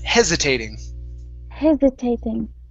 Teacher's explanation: Okay, so this is going to be a voiced S.